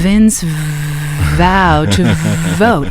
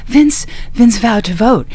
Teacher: all in the throat it's in the throat and it's breathy